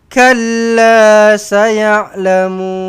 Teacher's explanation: ada sabdu pada lam tekankan